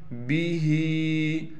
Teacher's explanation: با کے بعد ہا ہے، ہا کے نیچے کڑی زیر ہے، ہا کو کھینچنا ہے، با کو بالکل نہیں کھینچنا